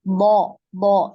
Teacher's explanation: Tidak ada udara yang ngalir ketika pengucapan huruf bo, ya bisa di ini ya, dibuktikan dengan meletakkan tangan di mulut. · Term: tertahan udaranya